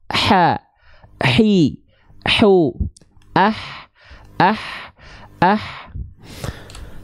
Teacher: karakteristik nafasnya berbisik lembut dan bersih enggak ada keresek-kerreseknya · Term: H kecil, ha kecil